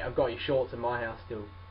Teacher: So like, your becomes ya.